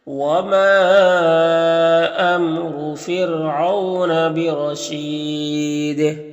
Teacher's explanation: وما میں مد منفصل ہے، امیم میں اظہار شفوی ہوگا، را کے اوپر پیش ہے، را کو پر پڑھیں گے، یہاں پر را کو باریک پڑھیں گے، او میں واولین سے نرم آواز کے ساتھ جلد پڑھیں گے، را کو پر زبر ہے، را کو پر پڑھیں گے، اور یہاں پر وقف کریں گے تو مد عارض وقفی ہوگا، دال میں قلقلہ ہوگا